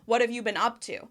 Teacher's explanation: I say, what've, I make the contraction with the question word.